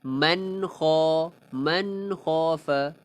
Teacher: nun mati bertemu kha, izhar halqi, jelaskannya.